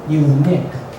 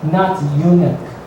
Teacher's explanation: the stress is on the second syllable